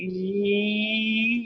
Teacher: if you hold on to Y you'll notice you're saying e all of a sudden you can try it yourself try and hold on to that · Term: semivowels